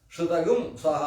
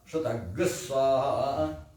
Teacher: ಅಲ್ಲಿ ಶ್ರುತಂಗ ಇದ್ದು ಸ್ವಾ ಅನ್ನುವಲ್ಲಿ ಸಂಯುಕ್ತ ಬಂತಲ್ಲ, ಸ ಪ್ಲಸ್ ವ, ಸಂಯುಕ್ತಾಕ್ಷರ ಬಂದ ಕೂಡಲೇ ಗುಮ್ ಹೋಗಿ ಗ್ ಅಂತ ಆಗ್ತದೆ